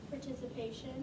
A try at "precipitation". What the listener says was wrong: Not participation. There's no T until towards the end. Pri, si, pa, tay, shun. Is there any T at the beginning of that word? Precipitation, not participation. It's pri, si, pa, tay, shun. Precipitation.